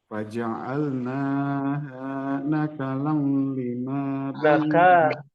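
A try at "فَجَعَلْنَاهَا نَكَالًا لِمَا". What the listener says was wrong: Ka-nya juga panjang.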